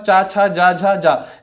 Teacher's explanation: तालु व्यंजन जिसको तालु की सहायता से, मतलब जीभ की सहायता से बोला जाता है